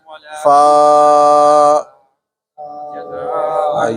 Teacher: اوپر والے دانتوں کے کنارے اور نیچے والے ہونٹوں کا خشک حصہ